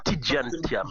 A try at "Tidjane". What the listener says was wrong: Tidiane. C'est Tidiane. Tu prononces comme si c'était un D-Y. Tidjane, hein.